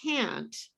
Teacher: fluent english speakers barely say that final t it's almost invisible